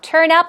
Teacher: stress goes right there on the second syllable, or rather on up